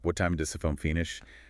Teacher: falling intonation. Your voice goes down at the end. That's typical for statements, commands, and what questions